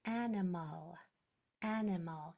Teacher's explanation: it has that schwa sound that's hard to hear toward the end